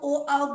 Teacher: जब बोलते हैं तो कंठ और ओठ दोनों आपस में मिल रहे होते हैं, हवा टकरा रही होती है तो बाहर निकलती है, इसीलिए इसके कंठोस्थ कहते हैं।